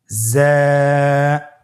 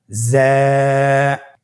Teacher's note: জিহ্বার আগা সামনের নিচের 2 দাঁতের পেট ও আগার সঙ্গে লাগিয়ে উচ্চারিত হয়